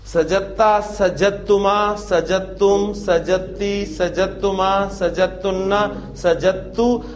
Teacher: ٹھیک ہے, دال اور تا اکٹھے آئے, ورنہ اصولاً تو ہمارا یہ اس طرح بنتا ہے سجدتا. اب دال اور تا چونکہ ہم مخرج حروف ہیں لہذا ان دونوں کو مرج کر دیا گیا, اور ساؤنڈ آپ کو صرف تا کی سنائی دے گی. اور ہمیں ہماری سہولت کے لیے آپ کو تا پر شد لکھی ہوئی ملے گی, تاکہ آپ نے اس کو جیم کی زبر کو ڈائریکٹ تا کے ساتھ ملانا ہے, دال پروناؤنس نہیں کرنی.